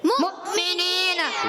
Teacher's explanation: इस हमजा को झटका देंगे · یہاں پر جو ہے واو مدہ نہیں ہوگا مگر اس حمزہ کو جھٹکا دیں گے